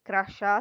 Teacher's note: porque a sílaba tônica nas três nos três casos é a última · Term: oxítona